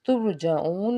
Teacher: را ساکن سے پیچھے پیش، تو یہاں پہ ہم نے اس کو پر پڑھنا ہے